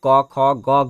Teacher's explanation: सभी का उच्चारण हम कंठ से करते हैं, इसलिए इसे हम बोलते हैं कंठ्य ध्वनियां